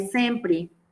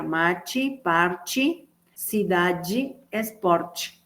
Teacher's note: una E final de palabra, seguida o no de S, cuando no esté acentuada, tiene tendencia a sonar como I.